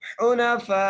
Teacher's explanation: فا کو ہم 5 الف کی مقدار کھینچ کے پڑھیں گے ، حنفاء، اس کے بعد واو ہے، واو کے اوپر زبر